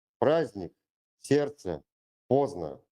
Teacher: The letter D is silent in complex consonant clusters.